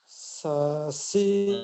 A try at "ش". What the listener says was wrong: masih sasi, yang gerak itu ujung lidah, belum tengah lidah. Ya ingat tengah lidah. Ketika teman-teman makrosnya benar, maka terdengarnya sya, sya tuh, sya. Gitu, bukan sa.